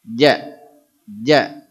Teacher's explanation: Jim itu ujung lidah ke langit-langit